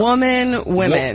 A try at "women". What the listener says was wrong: Women. Woman. You're saying woman. You're saying woman, singular, woman. Yes. that's exactly what it is.